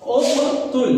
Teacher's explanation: उक़्तुल, यहाँ पे हमजा काफ पे जज़्म है, मैंने बताया काफ पे जज़्म तो कलकला होता है